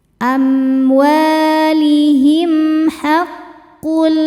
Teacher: Selanjutnya ada hukum izhar syafawi. Karena mim sukun menghadapi huruf yang bukan mim ataupun ba, maka mim sukun dibaca dengan jelas. · Cara bacanya tanwinnya dileburkan ke lam, tidak perlu ditahan, tidak disertai dengung. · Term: idgham bila gunnah